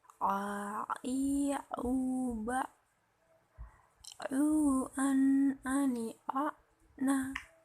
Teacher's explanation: dikeluarkan dari tengah-tengah tenggorokan dan tidak dikeluarkannya suara dari rongga hidung